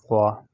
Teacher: زبان کے نوک اور اگلے دانتوں کے نوک سے ادا ہوتی ہے ضوا، اور اس کو نرم پڑھا جاتا ہے اور اس کو نرم حروف بھی کہا جاتے ہیں۔